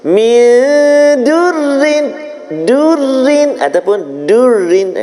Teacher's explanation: menukarkan huruf dad kepada huruf dal jadi nipis